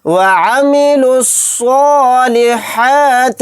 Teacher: یہ واو نہیں پڑھا جائے گا، پھر اس کے بعد الف بھی نہیں پڑھا جائے گا، پھر یہاں پر دوسرا الف بھی نہیں پڑھا جائے گا، لام بھی نہیں پڑھا جائے گا، ڈائریکٹ لام صاد پیش لس، اس طرح سے لام کو صاد میں ملائیں گے۔ صاد کو یہاں پر موٹا یعنی پر پڑھیں گے، ہا کو حلق سے نکال کر اچھے سے ادا کریں گے۔